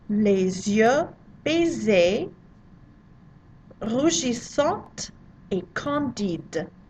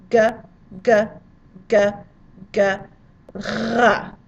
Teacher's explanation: the French R is rolled, but it's rolled in the back of your throat. And it's located in the place in your throat you would pronounce G, like gorilla, garage.